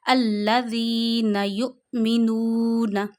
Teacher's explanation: میں نے نون پہ زبر نہیں کھینچی ، اسی طرح میم کے نیچے زیر نہیں کھینچنی، یؤمنون نہیں